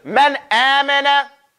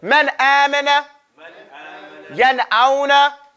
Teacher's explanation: Idhar is clear and independent noon sound.